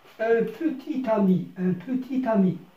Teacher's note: c'est faire prononcer la consonne finale habituellement muette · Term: liaison